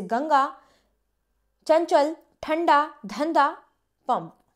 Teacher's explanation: अनुस्वार, इस ध्वनि का उच्चारण केवल नाक से होता है। इसका उच्चारण न या म के समान होता है।